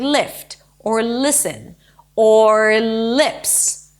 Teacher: then we have the relaxed e as in sit kid and fish